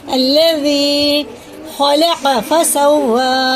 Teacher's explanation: زال جو ہوتا ہے نا باریک ہوتا ہے، زبان کی نوک اوپر کے دانتوں کے کنارے سے لگا کے.